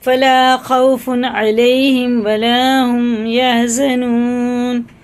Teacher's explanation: یا ساکن سے پہلے زبر اور واو ساکن سے پہلے زبر، ٹھیک ہے نا، ان کو جلدی پڑھیں، کھینچے نا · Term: حرف لین